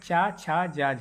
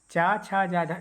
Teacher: चा छा जा झा स्पर्शी व्यंजन हैं, मगर स्पर्शी व्यंजन होने के साथ साथ ये स्पर्शी संघर्षी व्यंजन भी हैं।